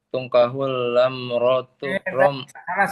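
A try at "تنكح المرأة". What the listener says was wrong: Salah. Tungkahul mar'atu. Bukan lamrat.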